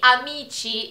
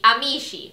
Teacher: people from Rome don't make the sound ch. They make the sound sh.